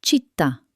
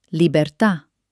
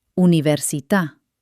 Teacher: In Italian, these words love to end with a stressed ta.